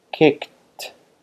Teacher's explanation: Yes, t. Again, the k, it's voiceless and it propagates its voicelessness to the t